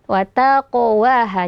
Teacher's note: jadi pantulannya alami jangan sampai ada tambahan Hamzah setelahnya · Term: Qalqalah